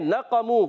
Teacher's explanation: नक़मू काफ को मोटा रखना है, वाव मद्दा, वाव साकिन से पहले पेश आ रहा है, मीम पर पेश है.